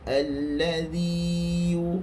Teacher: sepatutnya bacaan yang betul alladhi, zi ini dipanjangkan dua harakat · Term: mad tamkin